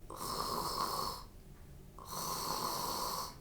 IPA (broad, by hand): rrrrrrrr